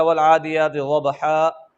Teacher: جب ہم اس پر وقف کریں گے یہ نون تنوین ختم ہو جائے گا